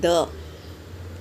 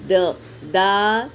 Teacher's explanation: حمزہ کھڑا زبر آ، اس طرح کھینچیں گے۔ دال زبر د، د کی آواز یہیں پہ رکے گی۔ دا نہیں کھینچیں گے